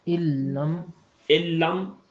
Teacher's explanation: تو اس لیے نون کا اپنا وجود ختم ہو جائے گا، اور علم آواز میں کہیں بھی نون موجود نہیں ہے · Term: ادغام کامل